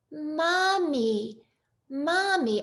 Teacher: they'll have that nice open American sound, and they'll drop their jaw